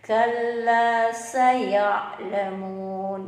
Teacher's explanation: Kalla, ka itu tipis ya. Makhrajul hurufnya ada di atasnya huruf qa ya. Qa itu di pangkal tenggorokan kita, ka di atasnya ya.